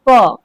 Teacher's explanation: पूरा प वर्ग का उच्चारण जो है ओष्ठ से होता है